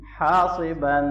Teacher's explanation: ان یرسل علیکم حاصبا، الف مدہ ہے، صاد کو موٹا پڑھیں گے اور وقف کے اندر یہ الف بھی مدہ پڑھا جائے گا۔